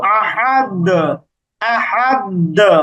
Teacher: আমরা এভাবে পড়ি যে কুলহু আল্লাহু আহাদ আহাদ এই যে দাল দালের শেষে আহাদ এইরকম করে আমরা প্রতিধ্বনি করছি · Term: কলকলা